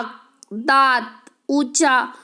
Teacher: उच्चारण नाक और मुंह दोनों से होता है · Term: अनुनासिक